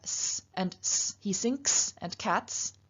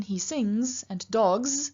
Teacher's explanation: this S in one case is preceded by an unvoiced sound, but the voiced Z is preceded by a voiced G.